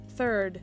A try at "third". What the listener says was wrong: It's the same. It sounds the same. It still sounds like turd. Turd. Turd. Turd. Instead of like a turd. Turd. It's still turd. It's still a big pile of turd.